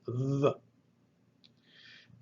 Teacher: Delta is a vocalized TH, like TH in the word the. Use your vocal cords when you pronounce it, the. Delta looks like the letter D, only the upright stem is crooked.